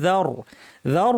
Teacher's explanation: র টা ভারী কিন্তু জালটা পাতলা